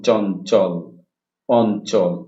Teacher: এখানে ইয় চয়ের উচ্চারণটা হচ্ছে ন চের মতো